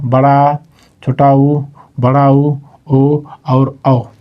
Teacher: जब हम बोलते हैं तो अपने जीभ का पश्च मतलब पीछे वाला हिस्सा एक्टिव रहता है। जैसे बड़ा आ तो पीछे वाला एक्टिव, छोटा ऊ पीछे वाला एक्टिव रहता है। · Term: पश्च स्वर